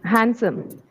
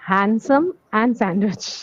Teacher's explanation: Handsome and sandwich here. D is silent.